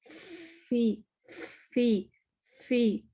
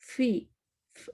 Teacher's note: ऊपर के दांत फा में नीचे के होंठ के तर हिस्से, यानी जहां हम लिपस्टिक नहीं लगाते, अंदर की साइड